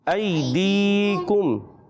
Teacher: ऐ को नहीं खींचेंगे, दी को एक अलिफ खींचेंगे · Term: या मत्ता